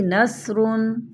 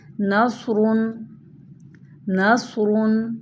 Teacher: سین کی آواز باریک اور سیٹی والی ہوتی ہے، اور صاد کی آواز موٹی اور سیٹی والی ہوتی ہے. جیسے کہ صاد کی آپ مثال دیکھیے نصرن نصرن، اور سین کو دیکھیے نصرن.